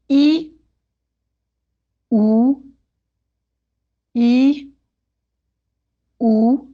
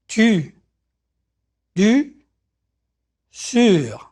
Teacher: For the French U, begin with the sound E, pronounce E. Now, while keeping the inside of your mouth in the E position, round your lips like OO.